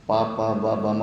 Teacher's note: ಎರಡು ತುಟಿಗಳು ಟಚ್ ಆಗ್ತವೆ. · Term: ಓಷ್ಠ